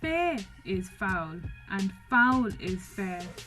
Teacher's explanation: tetrameter now the one thing i will mention here is that we are missing a unstressed syllable at the end of that line so that syllable has been dropped and that's something to think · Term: trochaic tetrameter